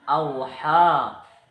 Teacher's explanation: huruf waw sukun didahului oleh huruf hamzah berharokat fathah, dibaca panjang 2 harokat. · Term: matlin